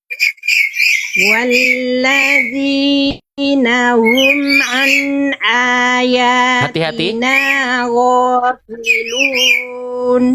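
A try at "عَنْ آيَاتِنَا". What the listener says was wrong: Di bagian ini Bunda, hamzahnya tahqiqan Bunda. Masih agak semi-semi ke ain Bun, saya dengar. An yang awal ain, yang ini hamzah. An ayatina saya contohkan pelan-pelan, teman-teman perhatikan baik-baik ya. Walladzina hum an ayatina ghafilun.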